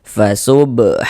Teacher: Mad tabi'i panjangnya 2 harokat.